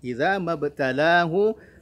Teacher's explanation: Idza mabtalahu ada qalqalah lagi di ba-nya